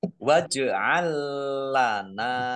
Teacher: jim sukun bacaan kolkolah dibaca memantul ditampakkan pantulannya